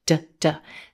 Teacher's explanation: the word good ends in the consonant D sound d d this is a voiced consonant sound